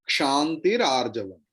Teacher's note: because of the Sandhi rule, that Visarga and then Akara, it becomes Ra. Visarga drop and becomes Ra, and then Arjavam A, then Ra becomes Ra A, means Ra.